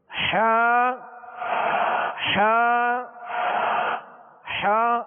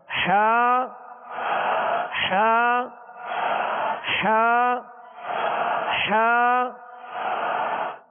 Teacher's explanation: حا کا جو مخرج ہے وہ حلق کے درمیان والے حصے سے حا ادا ہوتی ہے. اس سے ایک اور حرف بھی ادا ہوتا ہے جسے جو عین، حا عین، یعنی عین حا کا ایک ہی مخرج ہے، وہ وسط حلق یعنی حلق کا درمیانی حصہ.